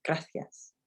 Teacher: make s so it's a soft sir like in bath um not the sound we have in z it's not hard it's a soft s